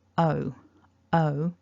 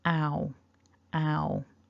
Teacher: On the right hand side, o, o, the tongue feels for me a little lower at the beginning, and you can see there at the end it's the same mouth shape. With o, the lips don't open as wide at the beginning as they do with ow.